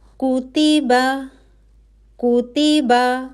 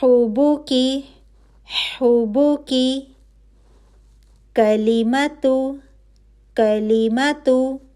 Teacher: اب کا کے لیے آپ کی زبان کی جڑ لگ رہی ہے سخت تالو پہ، جو نرم تالو کے فوراً بعد ہے۔ ٹھیک ہے، وہاں سے ایک حرف ادا ہو رہا ہے اور وہ ہے کا۔